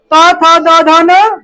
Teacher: त थ द ध न दांत से होता है।